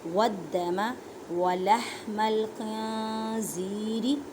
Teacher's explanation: دال پہ مضبوطی کریں اور دال کو 2 مرتبہ پڑھیں کیونکہ دال مشدد ہے